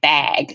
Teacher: the vowel is distorted by the mouth shape that the back of my tongue makes to make the g sound